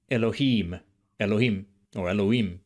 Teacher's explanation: In Elohim, you can hear the longer vowel in im in Biblical Hebrew.